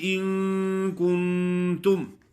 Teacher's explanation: ان پہ غنہ کرنا ہے، کن پہ غنہ کرنا ہے، تم پہ غنہ نہیں ہے، میم ساکن پہ غنہ نہیں ہوتا۔